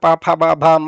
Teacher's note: ತುಟಿಗಳನ್ನು ಸ್ಪರ್ಶ ಮಾಡಿಕೊಂಡು ತುಟಿಗಳನ್ನು ಜೋಡಿಸಿ ಹೇಳುವಾಗ ಪ ಆಗೋಗುತ್ತೆ